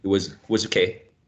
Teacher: in the case of was, we can use a schwa there